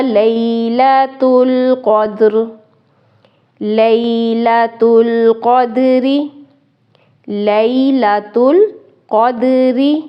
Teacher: را کو یہاں پہ باریک ادا کریں گے کیونکہ نیچے زیر ہے، اور اگر وقف کریں گے تو پھر را پر ہوگی۔